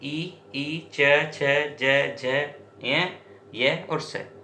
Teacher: जो तालु से जुड़ी है इसलिए तालव्य व्यंजन। जैसे आप इनका उच्चारण करते हो तो जीभ ऊपर की तरफ स्पर्श करती है।